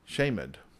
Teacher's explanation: the D is actually its own little syllable